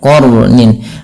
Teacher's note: di sini qnya tebal dan rnya juga dibaca dengan tebal